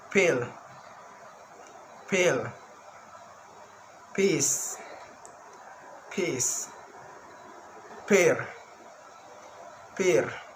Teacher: The first is voiceless bilabial stop sound